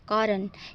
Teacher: the syllabic consonant, which are pronounced without a vowel